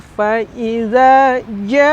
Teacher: karena masuk huruf Qalqalah maka harus ada pantulannya